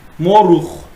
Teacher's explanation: sözün sonunda gələndə x kimi olur